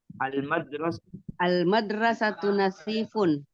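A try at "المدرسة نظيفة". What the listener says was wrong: Oke, nazifun. Kurang fasih ya zoknya nazifun. Zok ya.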